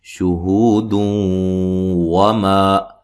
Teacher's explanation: نون تنوین کا یہاں ادغام ہوگا، شہود وما، ٹھیک ہے جی، ادغام مع الغنہ ہوگا۔